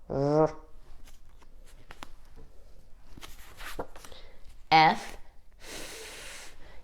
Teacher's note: you've got your teeth on your bottom lip here and you're blowing air